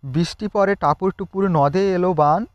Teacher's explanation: এর প্রতি পর্বের প্রথম অক্ষরে একটা প্রবল ঝোঁক পড়ে।